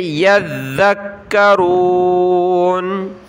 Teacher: بہم من خلفہم، خا لام زبر خل، خلفہم لعلہم، لعلہم یذکرون، یا کو ذال کے ساتھ، ذال کو کاف کے ساتھ، ذال پر ہم نے زبان نکالنی ہے اور ذال اور کاف دونوں کے اوپر تشدید ہے تو دونوں کو سخت کرنا ہے